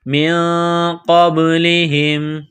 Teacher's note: کذالک قال الذین من قبلہم، نون ساکن کے بعد قاف ہے، حروف اخفا ہے تو نون ساکن پر غنہ کریں گے، آواز ناک میں چھپائیں گے، قاف کو با کے ساتھ پلس کرنا ہے، با ساکن ہے تو یہاں پر قلقلہ کریں گے